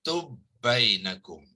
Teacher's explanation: So bila bertemu idgham mutamasilain, so sukun dalam huruf yang pertama tu dihilangkan, kemudian ba tu ditasydidkan.